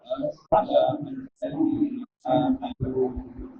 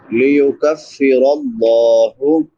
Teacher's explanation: ليكفر الله काफ बारीक अदा होगा, रा फुर पड़ी जाएगी क्योंकि रा के ऊपर जबर है, और लफ्ज़ अल्लाह भी पुर पढ़ा जाएगा क्योंकि लफ्ज़ अल्लाह से पहले ज़बर है। लफ्ज़ अल्लाह से पहले ज़बर हो पेश हो तो पुर पढ़ा जाता है, ज़ेर हो तो बारीक पढ़ा जाता है।